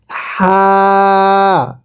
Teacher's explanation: এরপরে এই হরফটির নাম হা। এই হাটা উচ্চারণের সময় গলার মাঝখান থেকে বাতাস বের করে পড়তে হবে